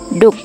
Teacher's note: doek kain diucapkan duk dengan D apikodental bersuara